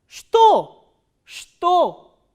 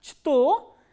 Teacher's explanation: ch letter is pronounced as sh, sh, not as ch